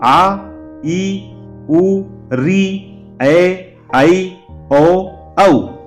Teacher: अगला है दीर्घ, है ना, दूसरा इसका वर्गीकरण में दिया गया है दीर्घ है। इन स्वरों के उच्चारण में जो पहला हमारा ह्रस्व था उससे दुगना समय लगता है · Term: दीर्घ स्वर